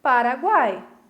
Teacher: Eu tenho uma semivogal, vogal e uma semivogal, três juntas.